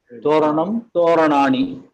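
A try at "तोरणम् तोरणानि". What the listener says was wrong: Uttamam. Uttamam.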